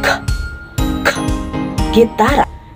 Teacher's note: G, K, K, na kung saan ang paraan ng artikulasyon ay pasara at may tunog, at ang punto ng artikulasyon ay napabilang sa panglangala at napabilang naman sa velar